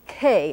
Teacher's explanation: that's called aspirated because there's a puffiness after the K and before the vowel